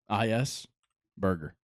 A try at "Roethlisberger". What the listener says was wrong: You said burger.